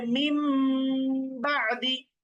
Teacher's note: এখানে নুন না পড়ে আমাদেরকে মিম পড়তে হবে। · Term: ইকলাব